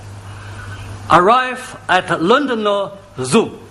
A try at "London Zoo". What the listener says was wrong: London Zoo. There are no O's.